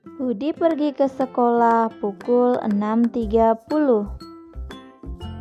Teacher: tanda baca titik dibaca dengan nada suara yang datar